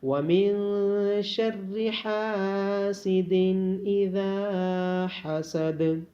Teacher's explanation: ذال کو نرمی کے ساتھ ادا کیا جائے گا اور ذال کے بعد الف مدہ ہونے کی وجہ سے ذال کو لمبا کیا جائے گا